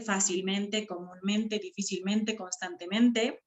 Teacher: esas palabritas tienen dos sílabas tónicas